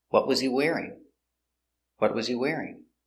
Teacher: an information question and the intonation goes down at the end